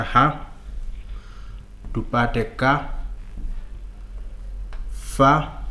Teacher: kwa hivyo hizi ni sauti au konsonanti ambazo hazina sauti